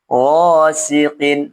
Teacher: gho dibaca ee tebal ya karena dia berharakat fathah ya gosiqin g dibaca dua harakat karena alif didahulu difatha setelahnya bukan hamzah atau sukun asli.